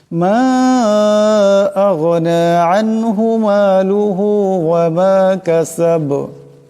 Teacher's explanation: এখানে দমসালে বা সাকিন হয়ে যাবে, আওয়াজটা ঠিক জটকা খাবে, কলকলা হবে